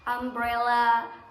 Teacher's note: huruf u di sini itu pengucapannya itu menjadi A atau ah